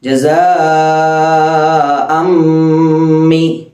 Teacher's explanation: ജസാഅം മി അവിടെ മണിക്കണം. തൻവീന് ശേഷം മീമ് വന്നു, ഇദ്ഗാം ബിഗുന്ന.